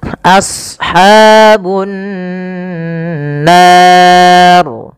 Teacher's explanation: As-sad, ya, huruf sad tebal, jangan as, jangan sin, tapi as ya, a-nya tipis, sadnya tebal. Karena sad punya sifat huruf isti'ala dan idbaq.